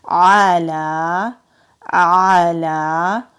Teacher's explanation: वरबतना आला, आइन हरूफ हल्की है, हलक से अदा होगा। लाम के ऊपर खड़ी ज़बर है, खड़ी ज़बर को एक अलिफ के बराबर खींच कर पढ़ते हैं।